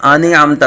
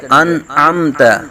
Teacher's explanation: نون ساکن کے بعد حروف حلقی میں سے عین آ رہا ہے تو یہاں اظہار کریں گے